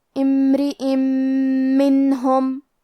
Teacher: میم حروف الادغام بغنہ میں سے ہے اور ادغام کا معنی ہے حرف کو حرف میں داخل کرنا، لہذا ہم یہ تنوین کو میم میں ملا کے غنہ اور تشدید کے ساتھ یہ حکم کو ادا کریں گے